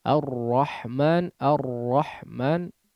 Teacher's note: huruf ra digetarkan dengan getaran yang halus itu namanya sifat taqrir pada huruf Ro Jadi tidak kasar RR ar-rahman Arrahman tidak ya tapi Getaran yang · huruf ro getaran ketika pengucapan huruf ro kemudian disebutkan dengan getaran yang halus atau lembut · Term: sifat takrir